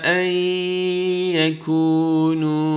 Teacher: Ey nun harfini ya'ya idgam ediyoruz.